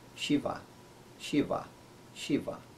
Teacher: And in Shiva, the name of God, it sounds a little harder, but still it's softer than English.